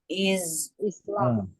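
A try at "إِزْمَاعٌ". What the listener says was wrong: panjang sebelum terakhir. Harus panjang. Isma'un.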